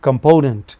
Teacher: component, the second syllable from left, the middle syllable is stressed.